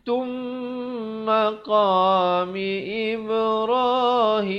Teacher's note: Asalnya bayyinatun. Tapi bila datang mim terus masuk jadi tum dengan dengungkan 2 harakat. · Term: idgham bi gunnah